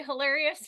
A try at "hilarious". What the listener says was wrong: you make the I really long.